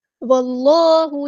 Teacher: واو کو ہم نے لام کے ساتھ ملا دینا ہے، حمزۃ الوصل ہمارا ڈراپ ہو جائے گا ، اللہ کا لام ہم نے یہاں پہ پور یعنی موٹا